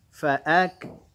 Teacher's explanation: Fa'ak, ya, kaf, ya. Huruf kaf itu punya hamas dia. Punya hamas, ada napas mengalir.